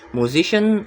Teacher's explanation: The stress is on the second syllable, musician. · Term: stress-shifting suffix